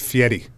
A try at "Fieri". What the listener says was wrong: There's no T.